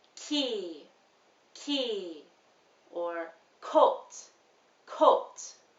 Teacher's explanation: in your vocal cords the tissue doesn't move for this sound you want to use more of the back of your tongue against your soft palate which is at the roof of your mouth but far back in your mouth